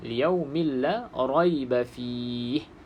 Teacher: kita baca dengan idgham bila gunnah, masuk ke dalam ra tapi tanpa gunnah.